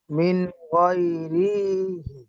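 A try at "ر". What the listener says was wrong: রি কে কান দিচ্ছেন কেন? রজের রি, এটাকে কান দিচ্ছেন কেন? আবার এই রটা কি এসছে রর নিচে?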